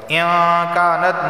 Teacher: نون ساکن کے بعد کاف آیا ہے اور کاف حروف اخفا میں سے اخفا والا غنہ ہوگا